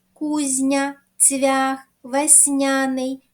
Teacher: пом'якшуються від голосного а не завдяки м'якому знаку кузня цвях весняний м'який знак не пишемо але вимовляємо м'яко ці приголосні